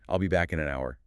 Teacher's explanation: >> In reality, a native speaker delivers this as a single unbroken exhalation of air. The K in back links to the I in. The N in links to the A in an. The n and an links to the h an hour which is silent so it links to the vowel. · The n and an links to the h an hour which is silent so it links to the vowel. The unstressed vowels all collapse into schwas. It becomes a rapid stream of sound.